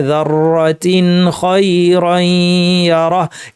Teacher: তানউইনের মধ্যে যে নুন সাকিনটা আছে এটাকে স্পষ্ট করে উচ্চারণ করতে হবে, গুন্নাকে বর্জিত করা যাবে না